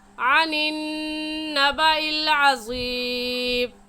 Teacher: अनिन नबा में नून मुशद्दद है और नून मुशद्दद पर हमेशा गुन्ना होता है, इसलिए हम यहाँ पर गुन्ना करेंगे।